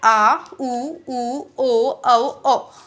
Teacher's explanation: पिछले पार्ट से बोलते हैं तो वो पश्च स्वर है